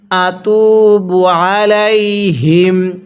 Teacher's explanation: আইনটা পড়ার সময় গলার মধ্যে চাপ দিয়ে পড়লে আইনটা সহিশুদ্ধ উচ্চারণ হবে